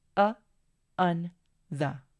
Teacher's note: Entonces, esos son los tres sonidos de estos tres artículos que ya hemos visto. Y todos tienen algo en común, el uso de la schwa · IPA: /ə/